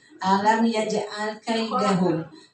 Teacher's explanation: Perhatikan hurufnya mim mati ketemu fa itu jelas ya Bu ya.